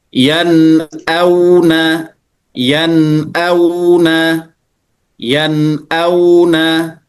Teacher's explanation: tapi nun itu masuk kepada khaisyum atau rongga hidung. Maka yad auna yanuna nunnya itu khaisyum a-nya jelas. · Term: izhar